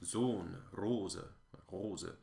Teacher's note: And so a closed O in Italian, like in cosa, rosa, will be different than a closed O in another language. German's closed O is significantly more closed.